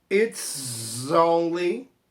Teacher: From here I think it's only, juntando o S com o som de Z